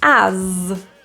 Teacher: This word is spelled with an S, but we pronounce it with a Z sound. So this is a voiced Z